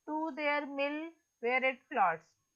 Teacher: Mill is stressed. Where is unstressed? It is unstressed. Floats is stressed.